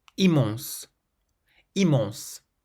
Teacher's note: so there's no nasal sound at the start of this word, immense, but there is one at the end